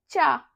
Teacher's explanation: का, गले से आवाज आ रही, चा, हमारी जीभ है वो अपने तलवे को स्पर्श कर रही